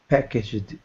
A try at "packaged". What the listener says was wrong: Be careful because you're adding an extra syllable. It's not packaged, but listen again. Packaged. I'm going to say it faster. Packaged. Packaged. So be careful because we don't say packaged. We don't add that ed at the end.